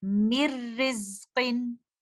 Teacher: تو یہاں پر نون ساکنہ کا ادغام اس طرح سے ہوگا کہ ہم نون ساکنہ کو نہیں پڑھیں گے اور لیٹر میم کو لیٹر را سے ملا دیں گے، اور اس طرح سے اس کی ادائیگی کریں گے مر رزقن۔ آپ کو لیٹر نون کی کوئی بھی آواز یہاں پر نہیں آئی کیونکہ لیٹر نون پوری طرح سے مرج ہو چکا ہے لیٹر را کے اندر